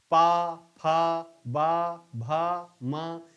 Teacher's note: सभी वर्णों के उच्चारण के समय आपके दोनों ओठ मिल जाते हैं। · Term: ओष्ठ वर्ण